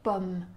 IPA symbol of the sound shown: ɔ